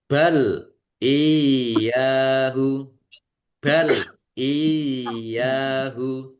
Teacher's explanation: Ini namanya mad tamkin ya. Ya tasdid yang didahului dengan harakat kasrah dibaca, ditekan, dan ditahan.